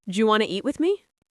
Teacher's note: do you became ja. Yeah, that soft j sound.